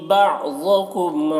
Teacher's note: بعضکم ضاد کو پر پڑھنا ہے، میم میں اظہار شفوی ہو رہا ہے، اس میم کو جلد پڑھنا ہے